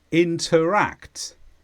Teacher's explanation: this is a verb and the stress is on act